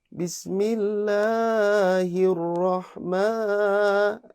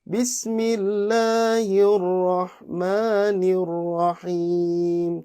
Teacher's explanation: mat tabi'inya kita jangan sampai kepanjangan. Tetap 2 harokat, jangan sampai Bismillahirrahman.